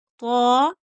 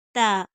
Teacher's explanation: یہ جو طا ہے وہ پر پڑھی جائے گی، موٹی منہ بھر کے پڑھی جائے گی، اور یہ جو تا ہے وہ باریک، طا تا، طا تا، طت، طت نہیں پڑھنا، نہ تت پڑھنا ہے، طت۔